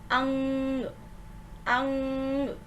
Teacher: शिरोरेखा के ऊपर बिंदी लगाई जाती है, एक डॉट लगाया जाता है और इसको उच्चारित करते समय हमारे नाक से ध्वनि निकलती है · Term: अनुस्वार